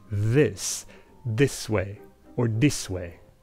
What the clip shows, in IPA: ðis d̪is way or dis way